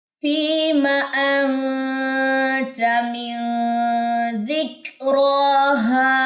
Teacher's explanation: فی یا مدہ، میم کی زبر لمبی نہیں کرنی · را کے اوپر کھڑا زبر ہے، یہ بھی لمبا ہوگا، اور ہا کے اوپر الف مدہ کا رول ہے. را اور ہا کی مقدار سیم ہوگی.